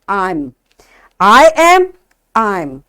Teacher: so these are the weak forms because here we are saying the words quickly speedily